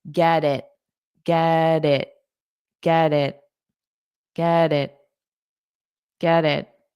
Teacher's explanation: So, this T becomes between vowels, so I can pronounce it more as a soft D.